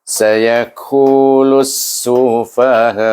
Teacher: Sini panjang, ku baca dengan mat asli, iaitu dua harakah. · Kemudian kita idghamkan, iaitu idghamkan huruf lam dengan huruf sin. Jadi lus tadi bila saya baca, itu dia menggunakan hukum idgham syamsi, iaitu diidghamkan kepada huruf sin, huruf lam. Kerana dia bertemu dengan alif lam syamsiah.